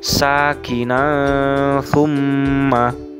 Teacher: fathah tanwin yang terdapat pada nun alif dibaca samar, seakan-akan terdengar huruf eng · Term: ikhfa